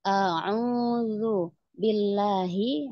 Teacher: haknya hak besar ya, dari pangkal tenggorokan